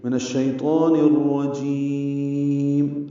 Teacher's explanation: میم کے نیچے زیر ہے, وہ نہیں پڑھیں گے, وقفاً ساکن کر دیں گے · اب نون کو الرجیم کی را سے ملا رہے ہیں. را پر زبر ہے, را پر پڑھیں گے. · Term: ادغام شمسی